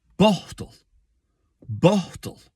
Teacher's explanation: there's more energy at the beginning of it it's got a more plosive gallic B sound it's got a dental T in the middle bottle it's got